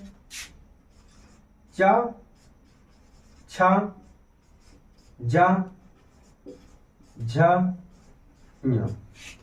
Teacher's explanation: तालव्य या उसी को तालू बोलेंगे इसे बोल देंगे च वर्ग च वर्ग के अंतर्गत कौन-कौन से आते हैं च छ ज झ ञ यह हमारा तालव्य हो गया